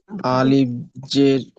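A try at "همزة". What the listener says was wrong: আলিফ নয়, হামজা। উপরে নিচে বা সাকিন জাবার যে বেশ কিছু থাকলে তখন সেটা আলিফ বলা হবে না, তখন সেটাকে বলতে হবে হামজা।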